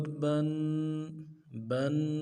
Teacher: غنے کو ایک الف کی مقدار میں کھینچنا ہے۔ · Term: غنہ